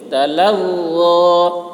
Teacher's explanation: ظا کی آواز بھی موٹی ہوگی